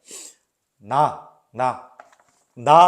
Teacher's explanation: 혀가 지금 여기 치조, 그러니까 잇몸을 딱 치는데 하면서 코 올리는 소리 나니까 비음이구나. 그러면은 치조음이면서 비음인 니은으로 갑니다.